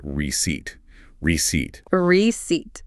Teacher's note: in English we do not say the P at all